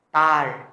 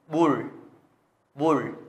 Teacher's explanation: Đứng đầu thì nó được đọc là R, nhưng mà khi mà đứng ở vị trí cuối ạ thì sẽ đọc thành chữ L, L cao ạ. Các em sẽ uốn lưỡi lên nhá.